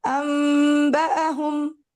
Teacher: نون کو ہم میم بنا دیتے ہیں اگر نون ساکن یا تنوین کے بعد حرف با آ جائے